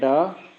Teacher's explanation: ड और ड है उसको उत्क्षिप्त व्यंजन माना जाता है